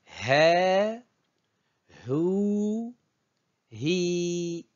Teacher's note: c'est le H prononcé de l'anglais ce n'est pas le H mu du français c'est plutôt le h aspiré de l'anglais